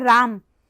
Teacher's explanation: जब राम कहते हैं तो म वो हलंत हो जाता है वस्तुतः। म हम लिखते हैं अ के साथ, लेकिन बोलते हैं राम और लिखते हैं राम।